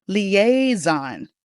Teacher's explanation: All right, that middle part is A, and it rhymes with play. So, and make sure when you say this sound, you say the Z and not the S. Okay, so we want it to sound like this: liaison, not liaison.